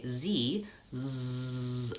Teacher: When I say Z, zzz, I can feel my throat vibrates. That's a voiced sound.